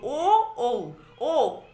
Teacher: আমাদের ওষ্ঠ সংকুচিত হচ্ছে আর কণ্ঠের কাছ থেকে আওয়াজটা বেরিয়ে আসছে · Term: কণ্ঠস্থ স্বর